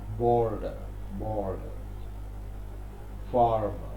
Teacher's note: Rhotic, meaning the R is pronounced even if it occurs at the end.